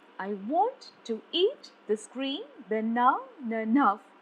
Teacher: I is unstressed and want is stressed. To is unstressed and eat is unstressed. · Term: iambic pentameter